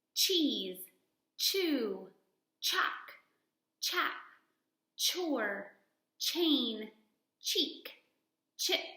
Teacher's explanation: to be rounded and your tongue right behind your teeth and your voice is off for the sound so no voicing